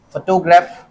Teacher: स्ट्रेस कहां पे लग रहा है, फो पे लग रहा है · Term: प्राइमरी स्ट्रेस